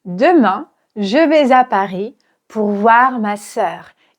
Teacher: Je vais à Paris et là en fait à la fin de chaque groupe je vais mettre un petit accent. L'accentonique en français est très léger. En fait on va juste accentuer légèrement la dernière syllabe.